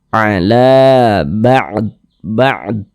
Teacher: Nah, ini sehingganya la dibaca panjang, mad tabi'i, panjangnya 2 harokat.